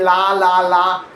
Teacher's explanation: For L, the tip of your tongue touches firmly right behind the top of your front teeth on the little ridge, while the sides of your tongue stay low, letting air flow around both sides.